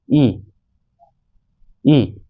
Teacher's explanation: वे वर्ण जिनके उच्चारण में मुख वृत्त के समान बंद सा रहता है अर्थात कम खुलता है, संवृत स्वर कहलाते हैं।